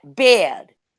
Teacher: the Mid-Atlantic short A sound, is pronounced like long schwa